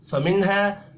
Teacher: نون ساکن کے بعد حروف حلقی ہے، یہاں پر اظہار حلقی ہوگا، غنہ نہیں ہوگا